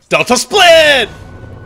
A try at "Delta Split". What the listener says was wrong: No, it's got to be Delta Split. Emphasis on the Delta. So you got to emphasize Delta so people know which split you're doing.